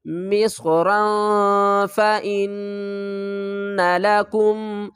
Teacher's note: یہاں پر اخفا کریں گے، تنوین کے بعد حروف اخفا میں سے فا رہا ہے۔